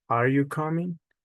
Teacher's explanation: Rising intonation for question